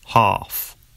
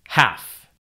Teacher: Ah in UK English normally becomes an a sound in American English.